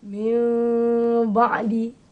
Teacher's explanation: Min ba'di ertinya bibir tidak dikatup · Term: iqlab